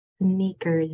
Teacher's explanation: the first S can say S, but the last S says Z. Sneakers. That's why those 2 S's say 2 different things. · There's sound that comes out. So that S is going to make its voiced or vibrating sound. Sounds like a Z.